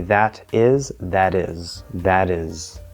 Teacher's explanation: in this case it becomes a flap d because it's american english